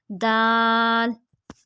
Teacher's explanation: زبان کی نوک اور اوپر کے دانتوں کی جڑ سے ادا ہوتے ہیں دال اور تا